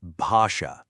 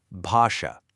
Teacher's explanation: It's an aspirated B, which just means you let a little puff of air out when you say it.